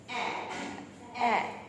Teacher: It's an open front vowel